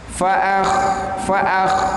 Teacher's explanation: sifat hurufnya kha itu hamas, maksudnya tidak boleh dikolkolahkan. Nah, nggak boleh begitu, tapi harus dilepas.